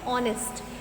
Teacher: when we are going to pronounce it, that time H will be silent. The sound will become of vowel.